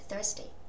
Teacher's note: Âm tờ hơi nhẹ hơn một chút xíu, nhưng mà bởi vì nó không có bị kẹp giữa nguyên âm nên là nó không biến hẳn thành đờ nhá.